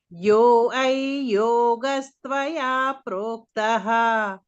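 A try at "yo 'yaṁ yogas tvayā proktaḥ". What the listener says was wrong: It is not yo I, yo yai. Not I. Yo yam yoga. Yo yai yoga. Yai yai ya. Yo yai yogastvaya proktah. We say ayya, no? Ayya, we say, no? Ayya.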